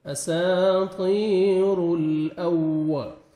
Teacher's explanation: واو مشدد ہے، آپ نے لپس کو اچھی طرح راؤنڈ میں لے کے جانا ہے